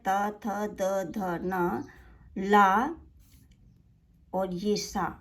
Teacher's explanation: त वर्ग के सभी वर्ण त थ द ध न ल और स कहां से उच्चारित होते हैं दंत से उच्चारित होते हैं